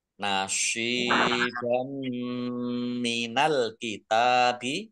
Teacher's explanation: Fathah tanwin bertemu dengan huruf mim bacaan idgham bi gunnah masuk dengan mendengung yaitu mendengung mim ditandai mimnya ada tasdidnya.